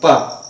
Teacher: तो जो दोनों ओठ है वो स्पर्श कर रहे हैं, तो पवर्ग जो होता है वो ओष्ठ होता है, मतलब ओष्ठ ही होता है।